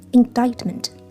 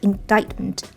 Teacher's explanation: 但是我们在发音流利的时候，可以把这个清辅音▁t▁不完全爆破